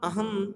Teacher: अनुस्वार इसका उच्चारण नासिका मात्र से होता है सर्वता स्वर के बाद ही आता है यथा अहम सामान्यतः मा